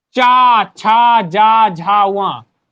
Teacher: ये सभी वर्णों को तालु के प्रयोग से बोला जाता है। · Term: चा वर्ग